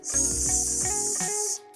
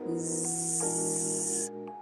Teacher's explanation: Pas bilang Z, leher kalian pasti bergetar kan? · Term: voiced